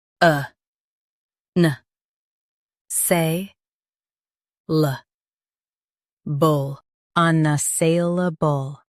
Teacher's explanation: Stress say and keep luh-bul light.